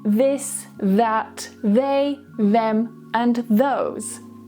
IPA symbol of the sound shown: ð